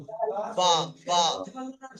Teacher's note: পায়ের মাখরাজটা দেখেন, দুই ঠোঁটের ভিজে অংশ মিলিতে উচ্চারণ হয়, দুটো ঠোঁটের ভিজে অংশ, বা বা, দুটো ঠোঁটের ভিজে অংশ একে অপরের সঙ্গে মিলিয়ে উচ্চারণ হবে